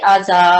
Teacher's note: الف مدہ سے پہلے مفتوح لیٹر ہے، تو اس کو 2 سیکنڈ ہم لمبا کریں گے اور اس کی آواز جو اسٹریٹ جاتی ہے مدہ کی، جیسے آزا.